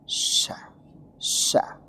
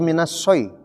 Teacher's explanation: huruf syin itu nanti sempurna kalau Ada siulan